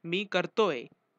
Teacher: In present continuous tense, ahe or its forms are generally pronounced as ye along with main verb. For example, mi karto ahe is said as mi kartoe. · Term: Short forms